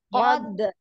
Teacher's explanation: Nah, di kol-kolah dulu ya, dipantulkan dulu